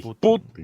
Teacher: la sílaba tónica está en la U, no en la I